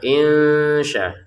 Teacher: Nun sukun bertemu shin kita baca dengan samar.